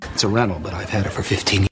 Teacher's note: we actually kept the V sound even though there's a consonant · we can cancel the T because of the N.